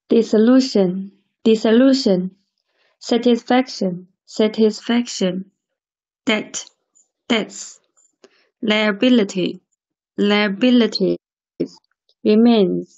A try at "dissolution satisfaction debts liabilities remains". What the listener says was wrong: yes ▁wonderful